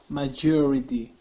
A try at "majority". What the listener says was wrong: Good, good.